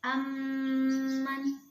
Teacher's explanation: Kemudian yang kedua yaitu ada idgham mimi atau idgham mutamasilain, yaitu apabila ada mim sukun bertemu dengan mim, maka cara membacanya yaitu dengan menyuarakan mim merangkap atau mentasdidkan, dan harus dibaca dengan mendengung.